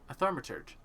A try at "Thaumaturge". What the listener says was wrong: I think you're putting an R in there.